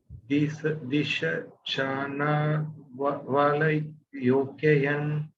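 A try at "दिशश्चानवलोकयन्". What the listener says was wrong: Valokayan, yeah.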